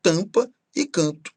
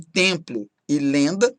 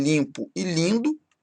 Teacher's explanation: Repare que depois do AM aqui vem uma consoante, depois do AN aqui vem outra consoante, e isso faz com que essa letra M ou essa letra N aqui apenas indique que a vogal anterior é nasal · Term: vogais nasais